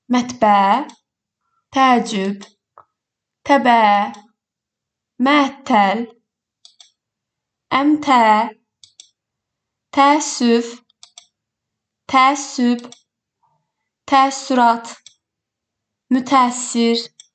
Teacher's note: Əgər sözdə iki ə hərfi yanaşı gəlirsə, bir uzun ə səsi eşidirik.